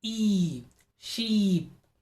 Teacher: front of the mouth it has forward shift of forward movement the body of the tongue is raised high and is as close as to the roof of the mouth the jaw drops very little and the mouth is barely open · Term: long e sound